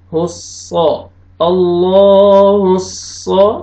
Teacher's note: صاد کو موٹا کر کے پڑھیں گے